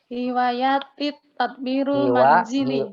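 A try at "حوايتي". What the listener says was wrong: Bukan hiwayati, bukan hiwayati. Ya-nya nggak panjang. Bukan hiwayati. Hiwayati. Iya-nya pendek, dia-nya pendek. Oh, yang panjang tuh wawunya Bu, yang panjang wawunya. Iya, hiwayati, bukan hiwayati.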